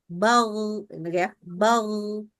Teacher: Karena ghain nggak boleh keluar udara. Kalau ghain keluar udara, dia berubah jadi kha itu.